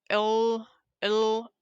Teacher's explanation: airflow around the side of the tongue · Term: laterals